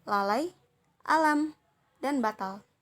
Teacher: L ini termasuk dalam bunyi apikoalveolar, termasuk bunyi sampingan dan bersuara